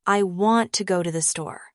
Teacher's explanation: in the sentence, I want to go to the store, the words want, go, and store are stressed.